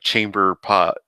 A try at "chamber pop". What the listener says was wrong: chamber pop. Not chamber pot. with a P, with a P as in Peter, not a T as in top.